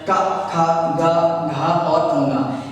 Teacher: इन 5 व्यंजनों का जो उच्चारण होता है वो कंठ से होता है।